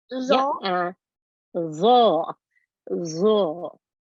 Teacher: the tongue comes out from the mouth slightly with vibration. Tongue is pressed against the edge of the upper front teeth. Air escapes. Thick sounding.